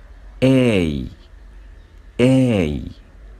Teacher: moves from the mid high to high position يعني بيرتفع من الارتفاع المتوسط to high position لأقصى درجة ارتفاع زي ما احنا شايفين كده في الفيديو بيقول A ده بالنسبة لشكل الشفتين وموضع اللسان واحنا بننطق الساوند A.